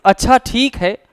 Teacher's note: तो यही दूसरा अच्छ क्या हो गया, विरोध दर्शा रहा है। और अगर इसी अच्छा शब्द को आप और ज्यादा खींच करके कहेंगे कि अच्छा ठीक है, ये प्रतिशोध दर्शाता है।